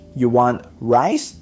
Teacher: Your pitch climbs on that last word. It's how the listener knows it's a question.